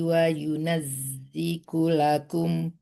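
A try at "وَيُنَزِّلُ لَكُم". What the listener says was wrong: Zilu bukan ziku ya. Lam itu. Bukan ku ya, itu tuh lam ya. kaf ya ada tanda S-nya di situ di dalamnya ya.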